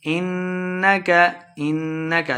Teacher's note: انک نون مشدد ہے، غنہ کر کے پڑھنا ہے